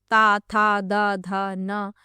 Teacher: पहला है कंठ, दूसरा है दंत्य, तीसरा है मूर्धन्य और चौथा है अनुनासिक। तो जिनका उच्चारण दांतों पर जीभ लगाने से होता है उन्हें कहते हैं दंत्य · तो इनमें जो जीभ है आपकी जीभ का अग्र भाग है जो आपके दांत हैं उनके जो पिछला भाग है उन्हें स्पर्श करता है